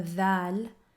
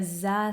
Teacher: the val and the za are both voiced sounds meaning that your vocal cords are vibrating while you're producing both of these sounds